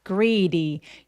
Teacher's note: greedy 할 때요 D가 모음 사이에 끼어 있어서 굴러가는 느낌 내 주셔도 좋고요. 대신에 모음을 길게 발음합니다.